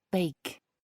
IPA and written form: beɪk (bake)